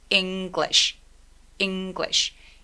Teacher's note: 왜 이 소리가 우리한테 되게 어렵냐? 울림이 있는 G하고 울림이 있는 또 L 소리, G, L 이런 소리들이 한 번에 내기가 쉽지 않은 거예요.